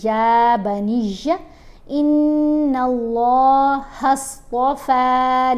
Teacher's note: نون کے اوپر غنہ بھی کریں گے اور نون کو جب لام سے ملائیں گے تو لام کو موٹا پڑھیں گے اور لمبا پڑھیں گے. لام کی آواز ویسے باریک آواز ہوتی ہے، لیکن صرف اللہ کا جو لفظ ہے اس کی حیثیت یہ ہے کہ یہاں لام کو کچھ جگہوں پر موٹا پڑھا جاتا ہے اور کچھ جگہوں پر باریک پڑھا جاتا ہے.